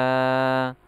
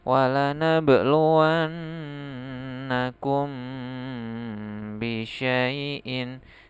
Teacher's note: Di sini letak ikhfa safawi terletak di sini. Mim sukun bertemu ba, maka dia ditahan beberapa saat dan samar dan dengung ya.